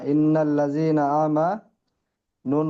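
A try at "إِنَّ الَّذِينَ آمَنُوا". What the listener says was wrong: মাশাআল্লাহ, তাহলে নুনের উপর তাজি থাকলে কি হবে? একালিফ ওটা টান নয়, নুনের উপর তাজি থাকলে একালিফ গণ্যা করে পড়তে হবে, ঠিক আছে? হ্যাঁ, এটা খেয়াল রাখবেন সবাই, নুন এবং মিমের উপর তাজি থাকলে একালিফ গুণা করে ওয়াজিব। তাহলে ইন্নাল্লাযীনা আমানু, সবাই বলেন।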